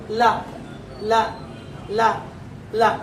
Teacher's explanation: ಲ ಹೇಳಬೇಕಾದ್ರೆ ನಾಲಗೆ ಲ ಲ್ಯಾಂಡ್ ಆಗಿ ವಾಪಸ್ ಮೇಲಕ್ಕೆ ಹೋಗಬೇಕು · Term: ದಂತ್ಯ